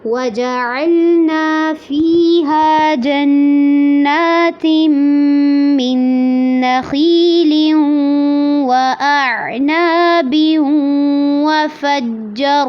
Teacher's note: وَفَجَّرْنَا میں جیم کو واضح کرنا ہے اور را کو پر کرنا ہے